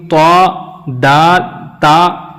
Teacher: زبان کی نوک اور اوپر کے دانتوں کے جڑ سے ادا ہوتے ہیں یہ تینوں حرف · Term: حروف نطعیہ